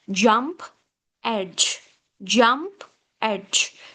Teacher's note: this is like d followed by fricative sound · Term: africates